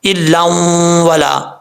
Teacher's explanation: یہاں پہ پھر ادغام یرملون ہوگا، 2 زبر کی تنوین کے بعد واؤ آ رہا ہے تو حروف یرملون میں سے ہے واؤ، ادغام یرملون ہوگا، 1 الف کی مقدار غنہ کیا جائے گا۔ جب یہ قانون لگ رہا ہو 2 زبر یا 2 زیر کی تنوین کے بعد واؤ آ رہا ہو، پھر واؤ پر یہ نہیں دیکھا جاتا کہ شد ہو یا نہ ہو، اگر شد ہو تب بھی کنیکٹ کیا جائے گا، ملایا جائے گا، شد نہ ہو تب بھی ملایا جائے گا۔